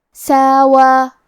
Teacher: کلمت ساوا میں سین کے بعد مد الف ہے اور واو پہ کھڑا زبر ہے تو یہ بھی مد الف ہے، تو ہم یہ دونوں مد کو برابر سے ادا کریں گے